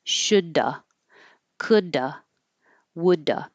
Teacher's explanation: those V's we just drop them and make an uh sound so you do release the D